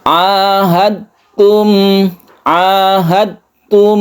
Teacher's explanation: Ini yang kita sebut dengan idgham mutajanisen ya. Jadi ini melebur ke ta, tidak kita pantulkan dalnya ya